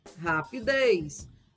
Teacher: já rapidez a sílaba tônica é a última sílaba oxítona